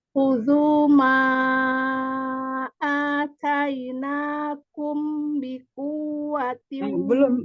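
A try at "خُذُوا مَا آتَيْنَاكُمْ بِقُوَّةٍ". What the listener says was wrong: Belum tertahan. 2 harokat. Atainakum bi, mim bertemu ba, ikhfa syafawi.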